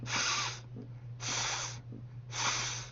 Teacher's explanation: 첫 번째 발음, S 발음은 Z 발음의 세트 발음으로서 치조 마찰음이었었죠. 그래서 그 우리나라의 시옷 발음보다는 조금 더 앞쪽에 소리를 밀어낸다고 생각하면서 발음을 하시면 돼요